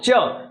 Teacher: जब हम बोलते हैं च तो हमारी जीव और हमारा तालु दोनों आपस में टच कर जाते हैं, और जो जीवा है ना वो तालु के साथ संघर्ष करके बाहर आती है। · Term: स्पर्श संघर्षी व्यंजन